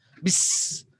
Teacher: Bis, sin. Ada nafas. Siulan.